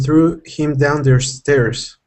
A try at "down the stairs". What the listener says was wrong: And just because you were saying it quickly, down the stairs, down the stairs. Yeah, down the stairs.